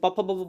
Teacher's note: जिन वर्ण का उच्चारण स्थान ओष्ठ है उन्हें हम लोग ओष्ठ वर्ण कहते हैं। ओष्ठ मीन्स ओठ, आप जानते हैं ना, ओठ उच्चारण, जैसे प फ ब ब बोल कर देखिए दोनों ओठ टच करता है।